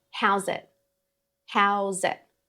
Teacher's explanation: The I in it actually reduces or changes to a schwa sound.